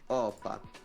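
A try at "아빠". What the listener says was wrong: Appa. You just start with a longer A. Yeah, imagine that you're pronouncing it like Japanese. The way we pronounce words and the way you pronounce it in Japanese is very similar.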